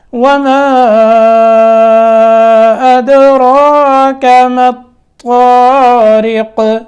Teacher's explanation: میم کے اوپر مد کرنی ہے، دال میں قلقلہ کرنا ہے، را کو موٹا کرنا ہے اور اس کے بعد را کو لمبا کر کے کاف کو باریک کرنا ہے۔ وما أدراك ما الطارق، یہ اسی طرح جس طرح پہلے الطارق تھا یہاں بھی الطارق اسی طرح پڑھنا ہے، طا کو موٹا کر کے آگے قاف میں سکون کی حالت میں قلقلہ، ٹھیک ہے۔